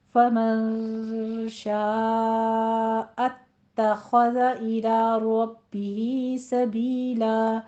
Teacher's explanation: اتخذ میں اور ربہ میں دونوں جگہ تشدید ہے، سختی کے ساتھ پڑھنا ہے. شاء میں مد متصل واجب ہے، فمن میں اخفا کرنا ہے.